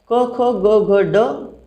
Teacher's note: क, ख, ग, घ, ड आणि ह या सर्वांचा उच्चारस्थान हे कंठ असल्यामुळे यांना कंठ गटात ठेवलेले आहे